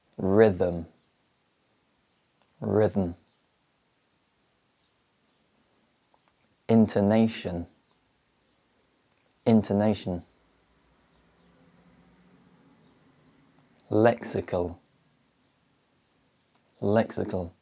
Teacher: in the reduced forms the schwa sound is barely audible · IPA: /ə/